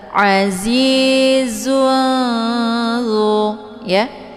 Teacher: Cara bacanya tanwinnya disamarkan kemudian siap-siap menuju ke huruf dha. Azizun ya. Jadi ini tanwinnya bagaikan bacaan yang digantungkan. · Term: ikhfa